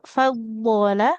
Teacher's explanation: fadola bukan fadolla yang ada tasdid huruf dotnya Bu ya bukan lamnya